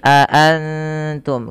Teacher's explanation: Suara nunnya disamarkan kepada huruf ta. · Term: ikhfa hakiki